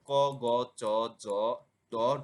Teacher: কাজে দেবে অল্পপ্রাণ ধ্বনি প্রত্যেক বর্গের প্রথম এবং তৃতীয় বর্ণের উচ্চারণের নিঃশ্বাস জোরে বের হয় না বলে এদেরকে অল্পপ্রাণ ধ্বনি বলে